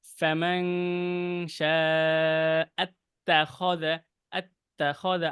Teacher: ফায়ের উচ্চারণটা একটু এই যে নিচের ঠোঁটে লাগাতে হবে